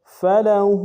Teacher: ہا کے اوپر الٹا پیش ہے، 1 الف دار میں کھینچیں گے